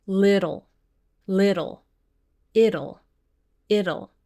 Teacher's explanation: We're pronouncing a flap T here. It's like pronouncing the word little, but without the L at the beginning.